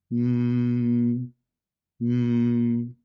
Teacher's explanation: Let's see first the pronunciation of the voiced sound. The sound is produced in a bilabial position. It is made by pressing the lips together to then release the air coming from your lungs through the nose. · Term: nasal consonants